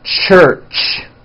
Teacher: It's an unvoiced sound, and you can hear the sound, for example, at the beginning and at the end of the word church.